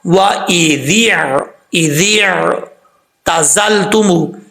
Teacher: زا سیٹی کے ساتھ پڑھا جائے گا کیونکہ حروف صفیریہ میں سے ہے، اور تموہم تا بریک پڑھا جاتا ہے، اس کا مخرج پہلے آپ کو بتا چکا ہوں، میم کے بعد واو ہے، واو مدہ ایک الف کی مقدار لمبا کر کے پڑھیں گے، ہم ہاں بھاری ساؤنڈ کے ساتھ پڑھا جائے گا، وَإِذِ اعْتَزَلْتُمُوهُمْ۔